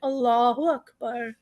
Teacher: اور جب با کے بعد را آتا ہے اور وہ بھی اس کے اوپر سے، کیونکہ را جزم ہے اور اس سے پہلے زبر ہے تو ہم وہ را بھی موٹا پڑھیں گے